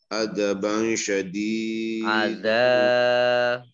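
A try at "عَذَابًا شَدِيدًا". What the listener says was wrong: Adzanya panjang.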